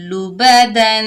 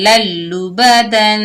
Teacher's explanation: لبدن، ملا رہے ہیں یعنی تنوین کے بعد یرملون کے مجموعے میں سے لام آ رہا ہے، ملا رہے ہیں، غنہ نہیں کر رہے